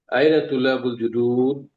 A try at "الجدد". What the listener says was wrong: Nggak pakai panjang, judud, nggak panjang, nggak ada wawunya. Judud. Aina tullabul judud. Judud.